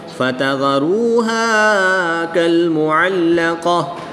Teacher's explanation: گول تا کو وقف کی حالت میں ہا ساکن سے تبدیل کر کے پڑھیں گے